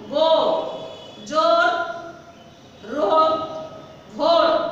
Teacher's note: বাংলা এক অক্ষর শব্দে ওকারটা দীর্ঘ হয়